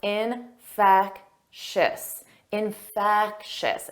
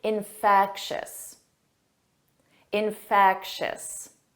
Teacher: the syllable stress is on the second syllable